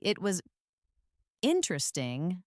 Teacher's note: Your voice falls and then rises at the end of a phrase. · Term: Fall rise intonation